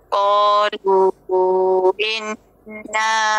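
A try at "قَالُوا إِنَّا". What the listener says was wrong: Jangan enna. Qalu enna. Tu enna. Inna. Jelaskan i dia.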